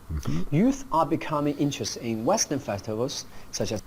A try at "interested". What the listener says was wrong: Okay, and some slurred speech here on interested.